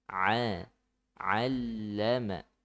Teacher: huruf ain makhrajnya di tengah tenggorokan